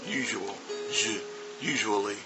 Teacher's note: and so that's a big sound that's voiced sh